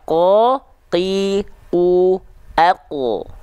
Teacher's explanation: huruf qof itu dilafalkan dari pangkal lidah atau aqsal lisan ya selanjutnya teman-teman Perhatikan ya qo Qi u